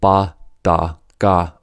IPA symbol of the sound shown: b d g